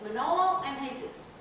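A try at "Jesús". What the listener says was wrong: Yeah, you don't pronounce the J.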